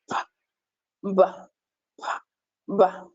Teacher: You notice that both lips are pressed together and then there is a release of air. The active articulator in this case is the lower lip, while the passive articulator is the upper lip. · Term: bilabial plosives